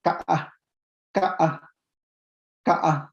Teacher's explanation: Y pero cuando lo tenemos en aislamiento, esta palabra pela, se realiza como Ka-a, Ka-a, Ka-a. Si ustedes notan, hay una rearticulación vocálica